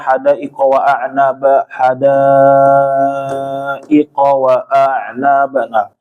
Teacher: Misalnya ketika membaca mad wajib ya. Mad wajib itu empat kali ketukan atau lima kali ketukan.